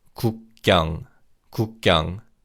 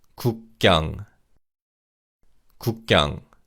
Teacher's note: And similar to 국가, 기역 in 경 is pronounced as a tense consonant